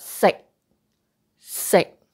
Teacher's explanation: It is a stop sound. You don't pronounce that k out